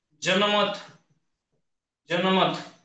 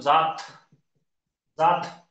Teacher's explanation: ज्या वेळेस आपण जात म्हणतो, जात, जात, आता या ठिकाणी ज चा उच्चार करताना जीभ आपली दाताला पण लागते आणि टाळूला पण लागते, म्हणून याला दंत तालव्य वर्ण